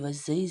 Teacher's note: زا میں سیٹی کی آواز ادا ہوگی